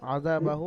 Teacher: তো মাদ্দে মুনফাসিল হওয়ার কারণে এখানে কি করে পড়তে হবে, আযা বাহু এক আলিফ টান হওয়ার যেখানে কথা ছিল হা উল্টা পেশ হু, এখানে 3 থেকে 4 আলিফ পরিমাণ টান দিয়ে পড়তে হবে